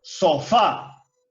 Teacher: Esa última sílaba que lleva la mayor fuerza de voz o el acento, fa, es la sílaba tónica. Y por otro lado, so, que no lleva una mayor fuerza de voz, es una sílaba átona.